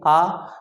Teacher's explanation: तो आ देखिए हम बीच से बोल रहे हैं तो आ जिह्वा के मध्य से बोला जाता है, इसलिए आ को हम मध्य स्वर कहते हैं।